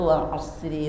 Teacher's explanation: Atau jannatin tajri itu rohnya tarqiq, tipis.